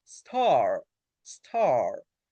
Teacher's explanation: you have to open your mouth and your tongue is going to be back.